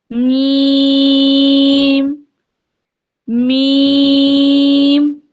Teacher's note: جب بھی میم کو آپ پڑھتے ہیں آپ یہ محسوس کر رہے ہوں گے کہ ہماری ناک کے بانسے میں بھی تھوڑی سی آواز گونج رہی ہے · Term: غنہ کی صفت